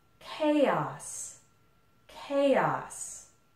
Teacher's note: It's 2 syllables. It's a short word, but there's actually 2 syllables here. Chaos. And the stress is on the first one.